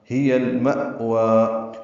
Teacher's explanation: گے، اظہار قمری ہوگا، ما حمزہ ساکن جھٹکے سے ادا ہوگا، وا کھڑا زبر ہے، 2 حرکات لمبا کریں گے ، وقفاً وصلاً یہ 2 حرکات ہی لمبا ہوگا، ہی المأوى،